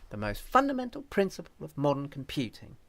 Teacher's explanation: other stressed syllables would be prince modern computing